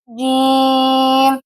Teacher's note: اس کا مخرج ہے زبان کے درمیان اور تالو کے درمیان سے ادا ہوتا ہے